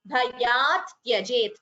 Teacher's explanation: there are two ths here before the ya both the ths should be heard